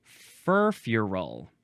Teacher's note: You got to emphasize the first syllable and then a little bit the last syllable.